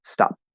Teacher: For all other glottal stops, you have to go into the position of that stop, like the P. You close your lips into the P, you close off your glottis, hold your breath for half a second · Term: glottal stop P